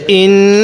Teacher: হামজা লাগবে এই নুনের সাথে, ইন। গুন্নাটা করব নাকের বাসি দ্বারা